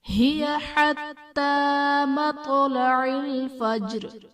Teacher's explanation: مطلع میں قا حرف قلقلہ ساکن ہے تو یہاں پر قلقلہ خوب ظاہر کریں گے